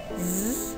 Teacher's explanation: when we produce z sound we can feel some vibration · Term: voiced